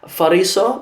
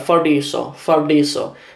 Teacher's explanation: in the south, it's more common to say fariso, pronounce it like a r, fariso, to trill it a little bit. We know that in the north it's a d sound